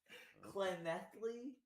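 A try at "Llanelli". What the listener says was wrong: It's not clan. There's no K.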